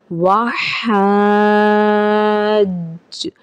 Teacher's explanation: جیم حرف قلقلہ کا ہے، یہاں جماؤ کے ساتھ ادائیگی کی جائے گی، قلقلہ کیا جائے گا۔ وحج، یہاں پہ مد لازم ہو کا بھی قاعدہ ہو رہا ہے، الف مدہ اور اس کے بعد سکون اصلی جسے ہم کہہ رہے ہیں تشدید کے چہرے کے ساتھ، ان دو علامتوں کو ملا کر الف مدہ اور تشدید یعنی سکون اصلی مدہ لازم کا قاعدہ ہوا۔